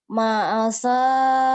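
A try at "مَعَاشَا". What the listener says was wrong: Panjang-panjang non.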